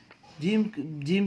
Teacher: زبان کے بیچ کو اوپر کے تالو سے لگانے سے جیم ادا ہوتی ہے